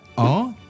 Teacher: l'importance donnée à la voyelle nasale « en » qui se rapproche du « in »